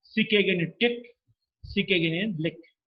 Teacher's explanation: Velar because the back of the tongue touches the soft palate or the velum. Plosive because there is a closure, there is a total closure, air is built up inside the mouth, and there is a sudden release. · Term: voiceless, velar, plosive